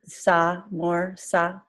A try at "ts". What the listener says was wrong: Yeah, so it's better with an S sound, but try to get a T at the beginning of it. So I put my tongue on my teeth, the front of my teeth, T, and then push it through with an S sound. T.